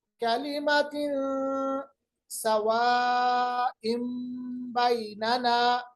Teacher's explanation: इक़लाब यानी आवाज को बदलेंगे, नून की आवाज को मीम में बदलेंगे।